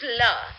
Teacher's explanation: The English la is an example of a lateral liquid.